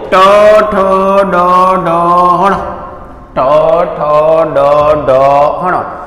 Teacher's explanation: तो ताड़वा अने दात वच्चे नो भाग छे एने मूर्धन कहेवाय, एटले कहेवाय मूर्धन्य। · નથી તાળવે જતી, નથી દાંત ઉપર જતી, દાંતવા અને તાળની વચ્ચે અડે. જો દાંતને બી નથી અડતી અને તાળવે બી નથી બોલતી. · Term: મૂર્ધન્ય